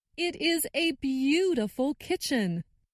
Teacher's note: stressed the word beautiful